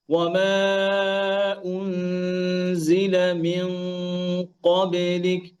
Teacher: কফ মোটা হরফ এজন্য গুন্নাও মোটা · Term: কফের গুন্নাটা মোটা